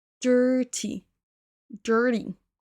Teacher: attention à la première syllabe. On entend pas de i ici.